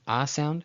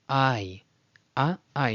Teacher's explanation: the KAMATZ has an ah sound, and when it's followed by a YOD, it turns from ah to ai, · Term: diphthong